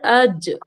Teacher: হামজা জিম জাবার আজ, জিমের ওপর সুকুন, তাই জিম সাকিনকে এখানে কলকলা করে পড়তে হবে।